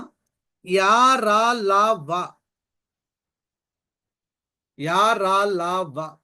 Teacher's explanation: అంగిలి సహాయంతో ఉచ్చరింపబడతాయి కాబట్టి వీటికి అంతస్తములు అని పేరు